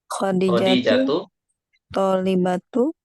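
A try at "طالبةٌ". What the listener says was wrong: Tun. Nah, ini baru tanwin. Tolibatun.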